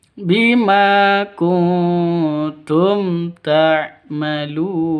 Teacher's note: Bima kuntum non mati bertemu dengan tak, samar didengungkan, siap-siap ke huruf taknya karena bacaan ikhfa hakiki.